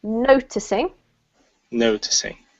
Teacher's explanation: So all of those words have the emphasis on the first syllable